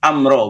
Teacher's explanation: Amro itu nggak ditahan, langsung amro, bukan amro.